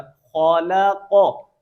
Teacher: یہ خوا بھی موٹا، قاف بھی موٹا